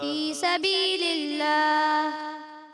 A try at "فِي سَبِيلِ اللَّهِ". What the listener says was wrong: آخر میں ہا کی ادائیگی کلیئر کریں.